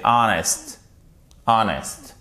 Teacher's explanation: un des rares mots dans lequel on ne prononce pas le H, avec aussi honest